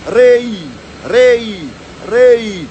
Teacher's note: Okay, and the last part, which is always the hardest part for people out there, it's pronouncing the R. And the R, you roll it like a cat when it's purring